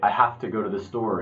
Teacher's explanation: When you say have to, you never say have to. The V becomes an F, to becomes t.